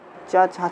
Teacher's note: च छ छ ये कहाँ से बोली जाएगी, तो आपका आंसर आएगा तालु से।